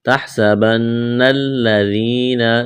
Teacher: نون مشدد پر غنہ کریں گے، آواز ناک میں چھپائیں گے۔ نون کو لام کے ساتھ ملانا ہے، لام میں سختی کریں گے